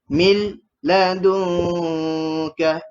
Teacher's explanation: Nama dia dengung sengau. Dengung sengau ni dengung dekat hidung, tapi dalam mulut kita, lidah kita tu dekat tengah-tengah, tak ada sentuh ke mana-mana tempat.